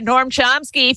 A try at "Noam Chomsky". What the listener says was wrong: It almost sounds like you're saying Norm, but you are saying Gnome.